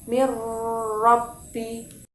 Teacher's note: Jadi definisinya adalah apabila ada nun mati atau tanwin bertemu dengan salah satu huruf idgham bila ghunnah, yakni huruf lam dan ro, maka cara membacanya memasukkan dengan tidak mendengung